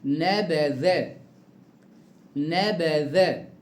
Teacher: انتبه معايا، الذال خلي بالك حرف لثوي. الذال حرف لثوي بيخرج من طرف اللسان